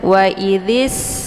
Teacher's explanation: Jadi hamzah ini di saat meneruskan bacaan ini hamzahnya digugurkan, jadi tidak lagi dibaca. Langsung sinnya disukunkan. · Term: hamzah wasal